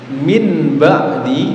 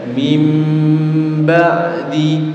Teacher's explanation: Suara nun sukun atau tanwinnya berganti mim sukun disertai mendengung. Min ba'di dibaca mim ba'di. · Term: Iqlab